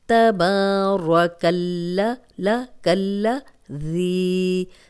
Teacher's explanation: اب یہاں پہ یہ جو لام ہے یہ ہم باریک ہی پڑھیں گے، کیونکہ وہ اللہ اور اللہم کا لام جو ہے وہ موٹا پڑھا جاتا ہے، لیکن یہاں پہ ہم لام کو باریک رکھیں گے، لیکن اس کو 2 بار پڑھیں گے